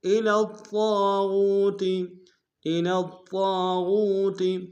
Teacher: طا کے اوپر تشدید زور دیں گے، طا کو موٹا ادا کریں گے، طا کے سالف مدہ ہے، ایک انداز میں کھینچیں گے.